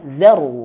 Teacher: ra-nya di sini sukun sebelumnya dia berharakat fathah nih huruf zal. Maka tebalkan